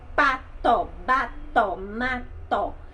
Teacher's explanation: A outra parte é o ponto ou zona de articulação, isso mesmo, que pode ser, as consoantes podem ser bilabiais, formada pelo contato dos lábios, que são, ó, o P, o B e o M.